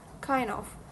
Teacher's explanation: The original phrase kind of contains the consonant cluster n, d, followed by the preposition of. In natural rapid speech, both the d and v sounds were omitted, resulting in kinda. This is a clear case of consonant cluster reduction, which make articulation faster and easier.